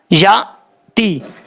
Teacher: اب اس کے بعد ہے یا تی، یا حمزہ بر یا، تا زیر تی. یہاں پر یا کے بعد جو حمزہ ہے یہ حمزہ جھٹکے کے ساتھ پڑھا جائے گا، اس کو نارمل طریقے سے پڑھنے کی ضرورت نہیں ہے. یا تی، اس طریقے سے.